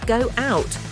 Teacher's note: Words ended in rounded vowels are linked with a W sound.